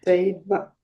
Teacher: in English we pronounce it as a V with the lower lip against the upper teeth